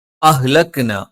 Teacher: ആ ഹ രണ്ടക്ഷരങ്ങളും തൊണ്ടയുടെ താഴ്ഭാഗത്ത് നിന്നാണ്